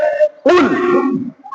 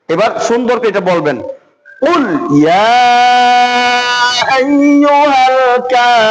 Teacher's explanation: তো কফের উচ্চারণটা গলার এই যে জিহ্বার একেবারে গোড়া, গলার মাঝখানে জিহ্বার গোড়াটা, হলক মানে গলাকে হলক বলা হয়, এর মাঝখানে জিহ্বার গোড়ার মধ্যে থেকে এই কফের উচ্চারণটা করতে হয়।